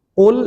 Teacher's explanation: qul ini qaf dibaca tebal, lamnya tipis ya